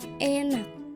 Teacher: Bunyi vokoid yang dihasilkan terdengar lebih terang atau tajam karena posisi lidah yang dekat dengan gigi dan langit-langit depan. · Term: vokoid depan